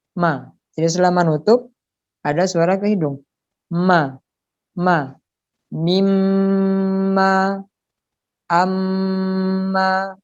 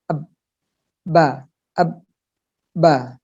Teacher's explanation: mim harus keluar ke hidung menjadi ma. Jadi selama nutup ada suara ke hidung.